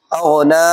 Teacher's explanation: حروف مستعلیہ، موٹے حروف کا، غین جو ہے یہ موٹے حروف میں سے ہے، اس کو موٹا کر کے پڑھیں گے تو پڑھیں گے او، کیا پڑھیں گے؟ اور نا کے اوپر کون سا قاعدہ لگ رہا ہے؟ کھڑی زبر کا، کہ اس کو دو الف کے برابر لمبا کریں گے، ایک الف سے دو الف۔